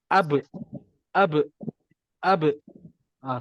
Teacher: Bila makhraj tu bertemu je macam ba bibir bertemu bibir. Ab dia bertemu je, kita terus lantunkan dia. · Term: qalqalah